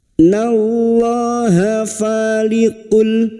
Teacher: Fa fathah diikuti alif 2 harokat mat tabi'i 2 harokat kita panjangkan.